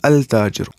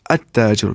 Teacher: If we will say at-tajiru, which means the merchant, we will not say al-tajiru, at-tajiru, because ta is huruf shamsi and lam will not be pronounced before it. So we will say at-tajiru, but here shadda comes.